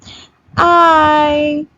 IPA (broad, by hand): ie